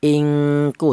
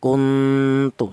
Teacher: dengung lebih dominan daripada samarnya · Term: ifa adna